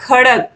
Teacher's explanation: खड़क आप बोलोगे तो आप देखोगे सारा आवाज गले से ही निकल रहा है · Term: कंठ ध्वनि